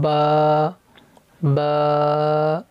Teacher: با، اس کو کھینچنا ہے، با با، دونوں ہونٹ آپس میں ملائیں گے تو یہ با ادا ہوگا